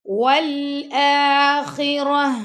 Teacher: یہاں پہ ہم تا کو ساکن کر رہے ہیں تو گول ہا کی آواز آئے گی جو گلے کے آخری سے آواز آتی ہے